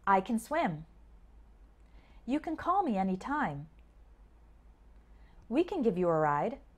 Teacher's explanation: Instead, we say something like kin or kn. The word gets shortened because the stress is usually on the main verb that comes after the word can.